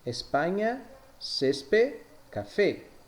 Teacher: la E siempre será cerrada, es decir, se pronuncia E, jamás E.